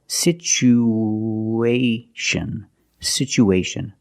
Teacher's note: We have two vowels together. The u and the a. We need to link these vowels with the sound www. like the w sound www.